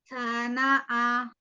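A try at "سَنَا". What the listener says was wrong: Tanya tidak dipanjangkan.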